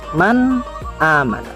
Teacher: Ketika nun sukun bertemu dengan hamzah atau huruf izhar yang 6, maka akan dibaca jelas atau izhar.